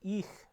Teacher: the frontness of those vowels which is causing the velar fricative to become this palatal fricative